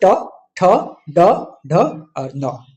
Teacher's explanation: ट वर्ग के जितने भी 5 वर्ण हैं वो, जैसे ट, ठ, ड, ढ और न, ये वर्ण मूर्धा से उच्चारित होते हैं।